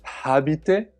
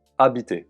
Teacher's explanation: The h at the beginning of habiter is not aspirated, it's a silent one. · Do not say habiter (with the English 'h') just say it as if the h didn't exist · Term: silent H